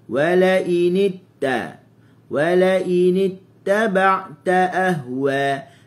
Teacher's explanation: Wala in ittaba'ta wala initta, nit hujung lidah digusi